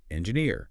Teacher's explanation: Practice that falling tone and pay attention to word stress, like engineer, stress on the end